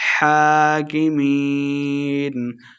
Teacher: ہا کے اوپر کھڑی زبر ہے تو 2 حرکات لمبا کیا جائے گا